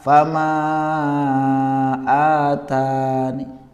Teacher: Raum itu dibaca setengah harokat kasrah. Setengah harokat kasroh, jadi seolah-olah membaca kasroh tapi setengahnya, jadi nggak nampak.